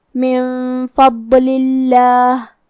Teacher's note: ہم لفظ الجلالہ کو مطلب کلمت اللہ کو پتلی آواز میں پڑھیں گے کیونکہ اس کے پہلے والے حرف کے نیچے لام کے نیچے زیر ہے تو ہم یہ حکم کو ایسے ادا کریں گے.